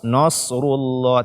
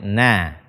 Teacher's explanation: Nasrullah, yang tebal itu adalah shad, bukan nunnya. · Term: nun fathah